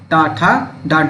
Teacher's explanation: ट ठ ड ढ ये कौन सी है आपकी मुर्धन ध्वनियां हो जाती है